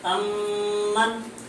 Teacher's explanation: میم ساکن کے بعد اگر دوسرا میم آئے تو ادغام ہوگا، یعنی اس میں غنہ بقدر ایک الف کے برابر پڑھیں گے. جیسے امن، یہاں میم ساکن کے بعد دوسرا میم آیا تو یہاں بھی غنہ کر کے پڑھیں گے.